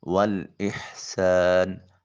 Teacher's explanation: بالعدل، عین کو وسط حلق سے نکالیں، دال ساکن ہے، قلقلہ ہوگا۔ والاحسان، ہا کو حلق سے نکالیں، سین حرف صفیریہ میں سے ہے، سیٹی کی آواز آ جائے گی۔ والاحسانی، الف خالیہ حرکت اور اس سے پہلے والے حرف سین کے اوپر زبر ہے، الف مدہ ہوگا۔